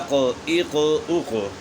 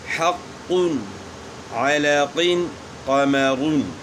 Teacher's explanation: قاف بھی حروف قلقلہ میں سے ہیں اور اس میں قلقلہ ہوگا۔